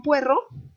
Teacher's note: Y entonces aquí hay un diptongo en puerro, ue, pero hace una rima imperfecta con perro